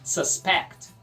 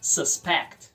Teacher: Verbo suspeitar, sílaba tônica é a segunda